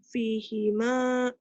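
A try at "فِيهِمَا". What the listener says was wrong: Fi-nya panjang. Fihima.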